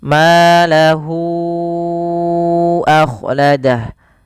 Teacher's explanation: hu-nya dipanjangkan dulu 4 harakat baru dilepas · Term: mat silah tawilah